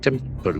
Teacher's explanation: There are two syllables, accent for the first syllable.